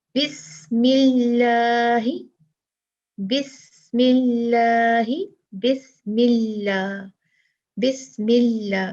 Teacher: जब लाम लफ्जुल जलाला से पहले जेर होगी तो लफ्जुल जलाला का लाम बारीक पढ़ा जाएगा।